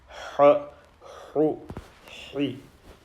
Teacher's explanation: Ha from the middle of the throat. You will feel a tingle near the Adam's apple.